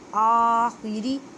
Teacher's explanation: را کو باریک کریں کیونکہ را کے نیچے زیر ہے